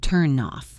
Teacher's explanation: When you say turn off, the N travels to the O. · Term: link words